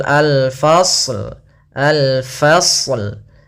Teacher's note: Kemudian pada lafal al-fasl, al-fasl, yaitu ada alif lam qamariyah pada lafal lamnya, alif lam. Di sini alif lam yang kita tulis dan kita baca dengan jelas lamnya. Kemudian al-fasl, fasl, ya sempurnakan shadnya baru ke lam.